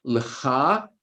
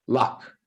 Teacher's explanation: The end of the pronunciation, that end vowel sound drops. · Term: northern variant